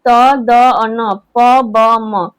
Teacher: अल्पप्राण जिसके उच्चारण में मुंह से हवा जो है बहुत कम निकलती है।